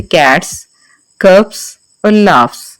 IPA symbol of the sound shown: s